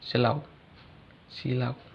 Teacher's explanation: Contoh diftong dalam bahasa Indonesia: silau, silau. Huruf U terakhir pada kata silau tersebut bukan representasi huruf U, melainkan semivokal W.